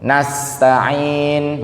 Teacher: ada huruf rohwah yang mengalir suaranya, ya ini huruf sin, maka temponya panjang